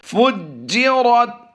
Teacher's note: را کو پر کرتے ہوئے تا سے ملانا ہے